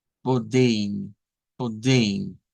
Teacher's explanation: casi siempre que se utiliza la E al final, se termina convirtiendo a este sonido como de un diptongo, como EI